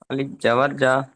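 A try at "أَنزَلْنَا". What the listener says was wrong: এটা জাল না এটা হল জালাম জবার জাল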